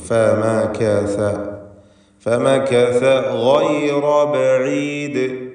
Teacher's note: ഗൈന് റാ രണ്ടിനും തഫ്ഖീം നൽകി തടിപ്പിച്ച് ഉച്ചരിക്കുക. ഗൈൻ ഇസ്തിഅലാന്റെ അക്ഷരവുമാണ്.